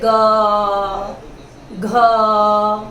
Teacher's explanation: जैसे ग, घ बोलकर देखिए आप खुद और स्वर तंत्री को हाथ लगाकर देखिए, इसमें कंपन होगा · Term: घोष